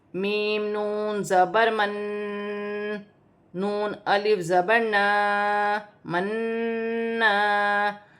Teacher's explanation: یہاں پر میم مشدد بھی ہے اور نون مشدد بھی ہے۔ نون مشدد میں غنہ کیا جائے گا۔ پھر آگے الف مدہ ہے، اسے 1 الف کی مقدار کھینچ کر پڑھا جائے گا۔